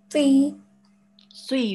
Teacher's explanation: It's a thick letter. You will read it with your mouth rounded a bit.